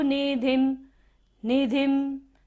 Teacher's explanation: ध के ऊपर बिंदु है और बाद में क्या है, भ, तो यहाँ पर हम बिंदी का उच्चारण म करेंगे